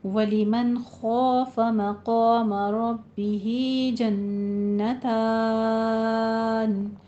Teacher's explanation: جنتان میں نون کے اوپر غنہ واجبہ 2 کاؤنٹ کرنے ہیں